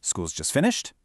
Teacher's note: But if it's a question, your voice rises at the end.